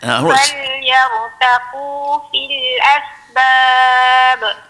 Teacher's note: Yang pertamanya hamas, angin. Kemudian kita lepas tu nama dia rukhawah. Kemudian yang bunyi siulan tu nama safir.